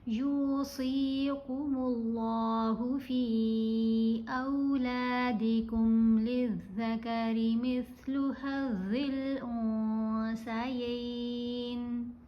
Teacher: یا کو ہم نے لمبا پڑھنا ہے، پیش کے ساتھ واو ساکن ہے نا، حرف مدہ ہے۔ صاد کو بھی لمبا کریں گے، زیر کے ساتھ یا ساکن ہے، یہ بھی حرف مدہ ہے۔